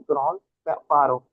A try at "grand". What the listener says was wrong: देखो ग्रॉन्द पारो नहीं होता, इट्स ग्रों पारो।